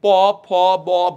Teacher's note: প, ফ, ব, ভ, দেখো দুইটা ঠোঁট কিন্তু লাগছে বিষয়টা, হ্যাঁ? এই জন্য এদেরকে বলা হচ্ছে কি, ওষ্ঠবর্ণ।